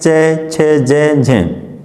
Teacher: अब उसके बाद में देखिए मित्रों सप्रस संघर्षी, वे व्यंजन जिनके उच्चारण का समय अपेक्षाकृत अधिक होता है और उच्चारण के बाद वाला भाग संघर्षी हो जाता है, सप्रस संघर्षी व्यंजन कहलाते हैं मित्रों।